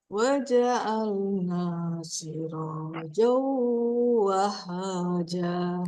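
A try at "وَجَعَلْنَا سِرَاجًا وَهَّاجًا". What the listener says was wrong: Wahaja. Kurang turun. Wahaja.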